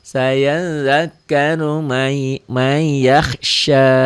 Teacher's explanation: Ro-nya dibaca tebel karena barisnya di atas.